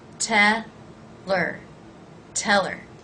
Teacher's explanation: I reduce the word her by leaving out the H